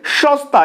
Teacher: প্রথমের যে দন্তস্বটা সেটা তালব্য স্বয়ের মতো উচ্চারিত হচ্ছে, কিন্তু যেহেতু পরের দন্তস্ব ত এর সাথে যুক্ত অবস্থায় রয়েছে তাই এই 3 নম্বর নিয়ম অনুযায়ী এটা কি হয়ে যাচ্ছে, দন্তস্বটা দন্তস্বয়ের মতোই উচ্চারিত হচ্ছে।